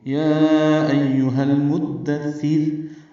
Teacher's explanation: یہاں پہ میم کو دال سے ملانا ہے، مدثر، سا کے نیچے زیر ضرور پڑھنی ہے، سا نرمی سے ادا ہوگا، دال کو سا سے ملائیں گے تو سا کو معروف طریقے سے جلدی پڑھیں گے، اور وقفاً را باریک ہوگی، یا ایہا المدثر، اور ملانا ہو تو پھر را پر پیش ہے، تو یا ایہا المدثر، را پر پیش پڑھیں گے تو را پر پڑھیں گے، اور آگے ایک ہی سانس میں پڑھیں گے۔